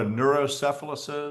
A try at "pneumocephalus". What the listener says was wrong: Pneumocephalus, maybe. You said neurocephalus, I thought. Yeah, pneumo with a P. Silent.